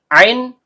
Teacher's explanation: Ain, tenggorokan bagian tengah.